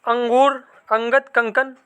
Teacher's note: उच्चारण में हवा केवल नाक से निकलते है